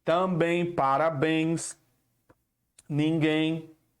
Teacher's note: Por exemplo, a palavra também é acentuada por essa regra. Também é um oxítona, ou seja, a sílaba forte é na última. Está sendo acentuada porque termina em em.